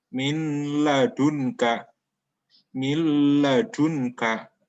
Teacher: maka dibaca melebur dan tidak dengung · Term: idgham bilahunna